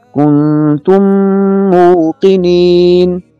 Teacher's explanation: دوسری مثال ملاحظہ ہو، کنتم موقنین، کنتم میم کے اوپر جزم ہے، میم ساکن ہے اور موقنین میں پہلا لفظ پھر میم آ رہا ہے، تو میم ساکن کے بعد دوسرا میم آنے کی وجہ سے یہاں پر ادغام ہوگا، پہلے میم کو دوسرے میم میں مکس کر کے پڑھیں گے اور یہاں غنہ ہوگا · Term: ادغام مع الغنہ